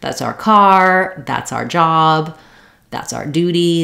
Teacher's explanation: You can hear how it's just this R sound rather than the whole our.